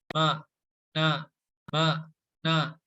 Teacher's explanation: Nah, jika seperti itu ya, jika kerasanya apa ya, pengek gitu ya kalau Sundanya, kalau bahasa Indonesia apa ya, sungau gitu ya, sengau apa ya, kurang lebih seperti itulah. Jadi akan kerasa gitu bahwa huruf nun dan huruf mim itu keluarnya dari rongga hidung.